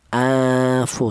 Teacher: Akan tetapi yang kedua ini namanya ikhfa ausat, yaitu pertengahan, tidak terlalu dengung juga tidak terlalu samar